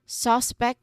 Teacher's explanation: Suspect with the stress on the first syllable. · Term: first syllable is stressed